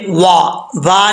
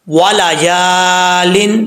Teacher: واو کو پڑھتے وقت ہونٹ گول کریں گے، یا کے آگے الف ہے، ایک الف کی مقدار لمبا کریں گے۔